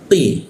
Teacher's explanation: Mal qi huruf qi ya itu q diikut tenggorokan tidak hanya dinaikkan sehingga ronggor udara terkunci. Tidak ada hembusan udara ketika dibacanya.